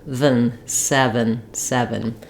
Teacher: basically either a little uh sound a little I sound are almost no vowel and just going right from V to n